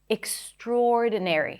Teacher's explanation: The primary stress is the or vowel.